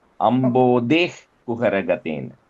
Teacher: the Visarga. So you put that H, ich sound.